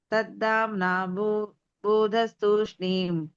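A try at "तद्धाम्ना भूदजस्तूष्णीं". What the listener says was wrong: భూదజ భూదజ అని ఉంటుంది కదా, జ అనేటువంటిది మీరు చదవట్లేదు ఈ అక్షరము. తద్ధామ్నా భూదజస్తూష్ణీం.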